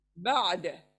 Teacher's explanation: आइन हलक से सॉफ्ट निकलेगा, सॉफ्ट नरमी के साथ